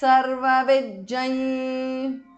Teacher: Sarvavit is a compound word. Sarvavit, the th in the end changes to j because of sandhi